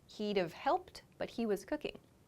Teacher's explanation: my subject he connects to the wood word which is reduced to d